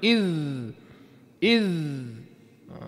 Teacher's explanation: Dia kena lama sebut makhraj huruf za tu. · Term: rakhawah